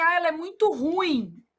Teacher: Você está pronunciando a palavra como paroxítona. E na verdade ela é uma oxítona. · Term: erro de prosódia